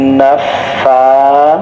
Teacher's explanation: এখানে সা হরফটি পাতলা করে জিহ্বার অগ্রভাগ এবং সামনের দুই দাঁতের অগ্রভাগ থেকে উচ্চারিত হয়।